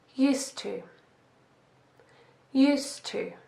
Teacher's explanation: Here is a quick point about pronunciation. The sound at the end of the word used sounds like a t sound. And because the next word is to, we put the two t sounds together, so there is only one.